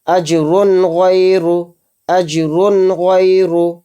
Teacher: اس را دو پیش رن میں جو نون آ رہا ہے اینڈ میں، لاسٹ میں، اس نون کی وائس کو ظاہر کر کے پڑھیں گے بلا غنہ کے، جلد پڑھیں گے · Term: اظہار